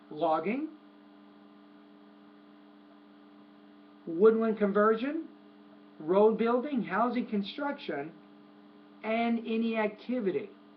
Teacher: once you get to activity the tone should drop